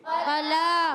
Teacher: فلا میں فا کو نہیں کھینچنا مگر لا کو کھینچنا ہے